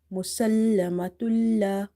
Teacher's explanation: So idgham means to merge, but here the merging will happen without ghunna, without nasalization